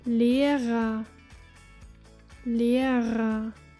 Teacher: the ending er, which in German sounds more like a, a. Listen to this word meaning teacher.